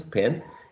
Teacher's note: we can find that P is going to be aspirated in initial position